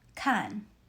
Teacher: 看 uses the fourth tone. Starts high and drops sharply.